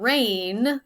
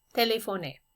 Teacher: In the word rain, the vowel sound lasts a little bit longer. But in French, it's a little shorter.